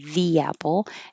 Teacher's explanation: like E before a vowel more often so it would be the apple and that makes an invisible y